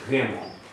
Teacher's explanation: Almost becomes fricative in the back of the throat, like you're kind of vibrating in the back of the throat.